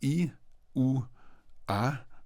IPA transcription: i, u, a